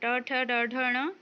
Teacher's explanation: ट ठ ड ढ ण यह मुर्धन्य है